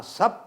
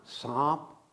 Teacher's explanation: सर्प शब्द था, सर्प शब्द का पहले पाली भाषा में बना सप और उसके बाद बना सांप, अनुनासिकता आ गई उस पर।